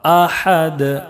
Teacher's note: احد بڑی حا اور دال میں قلقلہ ہوگا